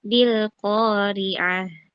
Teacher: ayat keempat tadi kurang turun sedikit nadanya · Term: diturunkan nadanya